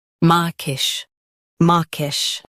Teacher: Stress maw and keep kish soft.